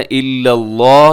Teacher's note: لفظ اللہ کو موٹا پڑھیے گا